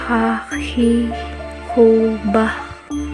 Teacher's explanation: Huruf ini dikeluarkan dari tenggorokan yang terdekat dari rongga mulut. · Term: huruf Kho